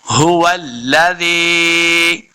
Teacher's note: زال زی یا زی، زال کو نرمی کے ساتھ پڑھیں گے، یا مدہ ہے، اس کو دو حرکات لمبا بھی کرنا ہے